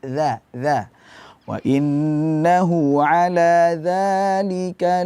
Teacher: makhrajnya ujung lidah berada di bawah gigi seri